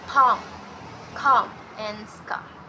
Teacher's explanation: it's articulated by placing the tongue in low position. That's why it's a fully open vowel. It's also made by using the back part of the tongue, which is directed to close the phlegm.